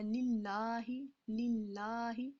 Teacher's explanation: اللہ کا لام یہاں پہ باریک ہے کیونکہ اللہ کے لام کے پیچھے والے لام کے ساتھ زیر ہے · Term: لام باریک